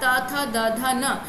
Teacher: आप बोलकर देखेंगे तो आपकी जिह्वा आपके ऊपरी दांतों को टच करेगी। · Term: दंत्य वर्ण